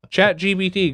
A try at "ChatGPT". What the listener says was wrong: GPT? It's GPT. You and my wife do the same thing. You say BT. I don't know why. It's PT. No. Chat GPT. No. G.